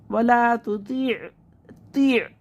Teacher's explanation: आइन को हलक से निकाल के पढ़ेंगे और मखरज में आवाज़ आके रुकेगी